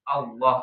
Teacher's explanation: tebalnya itu baru ketika dia lafaz Allah atau lafzul jalalah ya